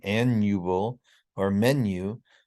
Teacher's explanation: if the syllable is not stressed like an annual or menu we do have that palatal effect on the U